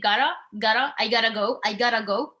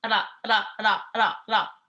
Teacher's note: you should feel it as like flapping against the roof of your mouth behind your teeth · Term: Moroccan R